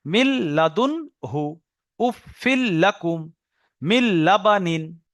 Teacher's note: নুন সাকিনের পরে লাম এসছে, নুনকে লামের সঙ্গে মিলিয়ে বিনা গুণনায় পড়তে হবে।